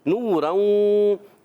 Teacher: نوروں، نون واو پیش نو، واو مدہ ہے، ایک الف کھینچنا ہے